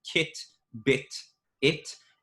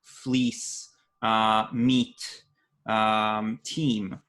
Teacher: in Hebrew, we don't have a distinction between I, like in kit, bit, it, and E, fleece, meat, team